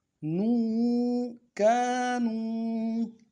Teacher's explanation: نون کو واو کے ساتھ ملانا ہے، واو مدہ ہے، ایک الف دال میں کھینچیں گے